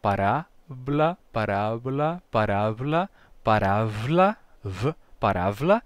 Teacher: Depois, parábla passa a parábla, certo? O som de B, ele vai se relaxar até ficar fricativo